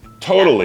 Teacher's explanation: It's like a little D-ish sound in there. Exactly. So the T turns into, it's really not a D sound, it's more just it's stopping, it's breaking up the two letters that it's in between, right?